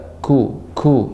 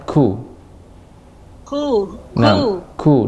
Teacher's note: adanya udara ya mengalir ya karena sifatnya Hames